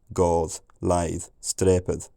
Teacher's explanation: it's possible that that unstressed final th was voiced